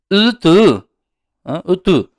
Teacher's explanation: Bu lab cho'chchayadi oldinga. U deb o'qiladi, cho'ziqroq. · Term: ingichka U